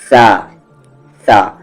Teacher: जबान की नोक और ऊपर के सामने वाले दो दांतों के अंदरूनी कॉर्नर को लगाएंगे